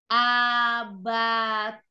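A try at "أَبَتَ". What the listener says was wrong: Jangan diseret, langsung baca.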